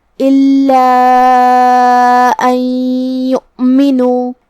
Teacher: حمزہ کی ادائیگی حلق کے نیچے والے حصے سے ہے جو کہ نون پہ جزم ہے.